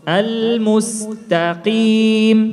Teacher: Ta tipis, qaf tebal.